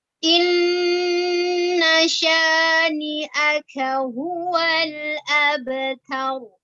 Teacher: nun sukun, nun tasydid itu dibaca gunna